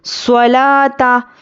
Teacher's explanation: کیونکہ سواد حروف مستعلیہ ہے اس لیے ہم سواد کو پر پڑھیں گے، لام پر کھڑا زبر ہے، 1 الف کے برابر کھینچنا ہے۔